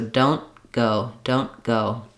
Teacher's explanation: stopping my n Sound short blocking the air like I would for a t but rather than releasing don't releasing the air for the tea